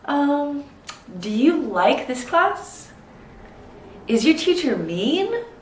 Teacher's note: make sure you go up at the end for that intonation